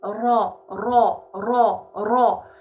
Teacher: Le ra, je le prononce, son point de sortie exact, par où on le prononce, c'est le contact avec mon palais. Ça va me donner ra, ra, ra, ra.